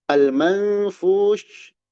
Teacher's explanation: Nun menghadapi fa ini. Nun sukun menghadapi fa. Ikhfa hakiki. Dibaca dengan dengung ditahan.